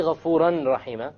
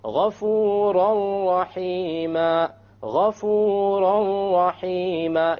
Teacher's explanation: you don't hear an n sound because you drop it